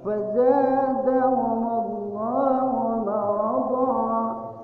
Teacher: Tanwin karena ada waqaf, berhenti, maka dalam ilmu tajwid itu harus dibaca panjangnya 2 harokat. Dihilangkan tanwinnya, ya, karena ada waqaf, tanda berhenti. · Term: mad iwad